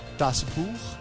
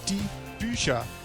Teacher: So we have a noun, das Buch, the book, das, which is a neuter singular, changes to a plural, definite article, die, and we have an ER ending, plus we have a change in the quality of the stem vowel. So it goes from a U to a U umlaut.